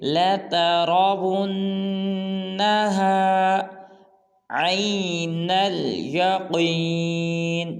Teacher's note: اس کے بعد ہمارے لیسن کی آیت نمبر 7 ہے ثم، غنہ کریں گے، نین کے ناک میں آواز کو لے جائیں گے، لَتَرَوُنَّهَا، لَتَرَا میں را کو پورا ادا کریں گے، واو کو جب نون مشدد کے ساتھ ملائیں گے تو غنہ کریں گے